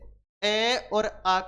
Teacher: अ और आ का उच्चारण करेंगे तो हमें विशेष दबाव महसूस होता है किस पर कंठ पर यानी यह अपने आप में क्या कहलाएंगे कंठे स्वर और आवण